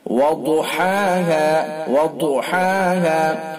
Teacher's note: ضاد حروف مستعلیہ میں سے ہے، اس لیے پر یعنی موٹا پڑھا جائے گا منہ بھر کے